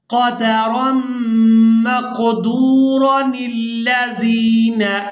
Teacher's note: اب یہاں پر ہم وصل کے ساتھ سیکھیں گے تو پھر ہم نے را کو بغیر کھینچے ادا کرنا ہے اور نون کو ہم نے لام مشدد کے ساتھ ملانا ہے اور تلاوت اس طرح سے کرنی ہے قدرا مقدورا الذین۔